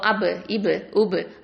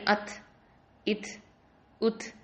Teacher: இப்போ அபு, இபு, உபு அப்படின்னு ஃபாஸ்ட்டாக ஓதணும். அதே மாதிரி அத், இத், உத் அப்படின்னு சொல்லும் போது ஸ்லோவாக ஓதணும்